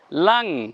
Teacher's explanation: কেন সদ আছে তাই অনুস্বার করতে হবে গুন্না করতে হবে